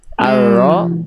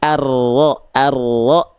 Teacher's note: Jadi huruf ro itu kan sifat getarannya takrir. Jadi getarannya enggak terlampau banyak tapi juga enggak boleh hilang.